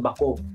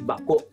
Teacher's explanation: Meron siyang glottal stop doon sa dulo ng O.